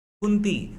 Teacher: कुंती का जो बिंदु है वो न में बदलेगा